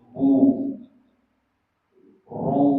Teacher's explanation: Dommah itu artinya memonyongkan. Sehingga kalau bilang bu mulutnya harus ikut bu ru. Jadi semua yang berharakat domah itu harus monyong.